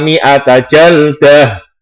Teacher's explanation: Tak marbuto ketika diwakafkan, maka menjadi hak.